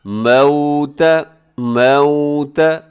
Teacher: واو ساکن سے پہلے زبر ہے تو یہ واو لین ہے، آپ نے یہاں اس کو نرمی سے پڑھنا ہے، مجہول نہیں پڑھنا اور جھٹکے کے ساتھ نہیں پڑھنا۔